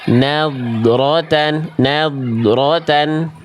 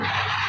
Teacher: huruf dho itu sifatnya di poin dua adalah rokhwah, mengalir suara, jadi tinggal kita alirkan.